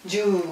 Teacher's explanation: donc un long ou